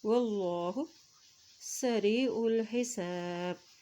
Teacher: اللہ کا نام موٹا ادا کیا جائے گا، اللہ کے نام سے پہلے زبر ہے ، واللہ سریع الحساب، سین زب سا راز یا ری، سری